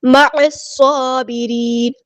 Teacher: عین کو مستحل لیکن مڈل تھروٹ ادا کریں گے